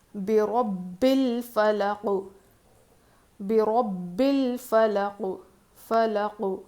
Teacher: جب قوف پر جزم لگے گا تو اس پر قلقلہ ہوگا